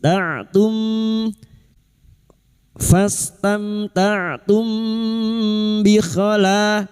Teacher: Ta'tum fastamta'tum bi khala, mim sukun bertemu ba, biasanya mim sukun dibaca jelas, kali ini bertemu ba, namanya bacaan ikfa syafawi, samar di bibir, mim sukun kita samarkan tumbi sambil mendengung dan siap membunyikan huruf ba, kita dengungkan selama 3 harakat.